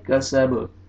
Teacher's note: वक्फ की सूरत में बा साकिन हो जाएगा, सीन ज़बर बा जज़म सब, और बा पे क़लक़ला करेंगे